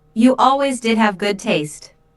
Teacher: Notice the stress on did, to emphasize the fact that Julia does have good taste.